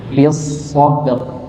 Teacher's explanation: Maka B-nya tipis, so-nya tebal, nggih. Ba-nya tipis, o-nya tebal.